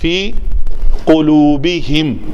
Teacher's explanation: گلے کے اندر لوتھڑا جو لٹک رہا ہے, وہ جب بالعکس بالمقابل تالو کے ساتھ لگتا ہے تو قاف ادا ہوتا ہے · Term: قاف کا مخرج